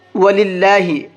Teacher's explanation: اللہ کے لام کو باریک کر کے پڑھیں گے کیونکہ یہاں پر اللہ کے لام سے پہلے زیر ہے اور اللہ کے لام سے پہلے زیر ہوتا ہے تو اللہ کے لام کو باریک کر کے پڑھتے ہیں۔